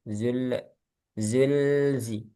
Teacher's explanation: Lam sukun jangan mantul.